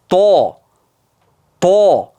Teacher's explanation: Tilni orqasi tanglenga qarab ko'tarilyapti. · Tor joydan chiqqani evaziga tovush yo'g'onlashib ketadi. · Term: istilo